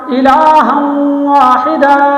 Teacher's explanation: تنوین کے بعد آگے واو ہے تو اس لیے ہم نے یہاں پر ادغام کیا غننے کے ساتھ